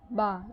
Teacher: ہونٹ پہلے ملے ہوئے تھے، پھر وہ الگ ہو گئے، یعنی کہ متحرک حرف کو ادا کرتے وقت آپ کے جو مخرج ہے وہ پہلے آپس میں ملا ہوا ہوتا ہے اور پھر الگ ہو جاتا ہے۔